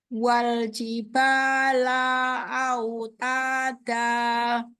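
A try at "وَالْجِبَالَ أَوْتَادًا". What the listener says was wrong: Yuk, lamnya hati-hati hanya satu harokat saja. Wal jibala autada.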